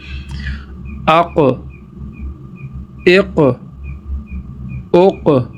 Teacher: اب ان کو ساکن کے ساتھ پڑھا کیونکہ یہ ساکن جو ہے وہ جھٹکے کے ساتھ ادا ہوتا ہے